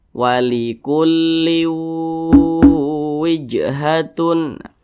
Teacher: diengungkan suaranya itu kita tahan e hingga panjangnya itu dua harakat atau kira-kira dua ketukan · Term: Idam bunah